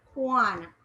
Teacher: you will more hear the A sound than the U sound.